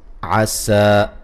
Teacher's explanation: سین کو باریک سیٹی سے کھڑی زبر ہے، الف مدہ کے قائم مقام ہے، اس کو ایک الف کی مقدار کے برابر لمبا کریں گے۔